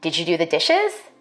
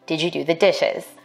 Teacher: for white speakers we expect a rising tone in questions like these · african american speakers may be more likely to ask a yes no question with a level tone or a falling tone for white speakers we expect a rising tone in questions like